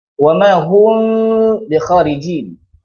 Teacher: cara bacaan dia menyembunyikan mim mati ke dalam huruf ba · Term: ikhfa syafawi